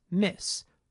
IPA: mɪs